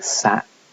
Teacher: t is unreleased when it's at the end of the word